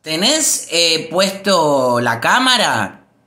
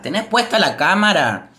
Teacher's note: Cuando hacemos una pregunta, la entonación queda arriba.